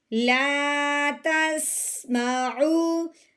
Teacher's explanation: سین جو ہوتا ہے وہ سیٹی والا حرف ہوتا ہے، ہم نے اس کی سیٹی کی آواز نکالتے ہوئے پڑھنا ہے